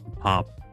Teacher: the onset piyup is fully released, whereas the coda piyup is unreleased in the Korean word pop, meaning meal or cooked rice.